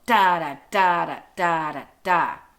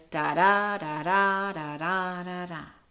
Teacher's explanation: And it's not just about that, it's also kind of about the feeling of it. An iambic meter has a lilting feel to it because it is that rising meter. It ends on a stressed beat.